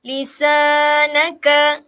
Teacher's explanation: Mad sila qasirah. Lisanaka, lisa 2 harakat kerana sebelah sa ada huruf mad